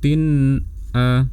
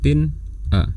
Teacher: cukup ditahan sebentar suara nun sukunnya, kemudian lepas dan lafalkan hamzah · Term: izhar